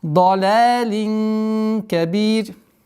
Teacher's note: применяем правило ихфа, мягкое ихфа в размере двух огласовок, и при остановке танвин кесра аннулируется, переходит в сукун, и появляется у нас долгота в размере двух огласовок кесры.